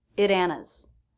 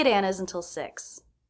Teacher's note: the next word begins with a vowel sound so the T is a flap T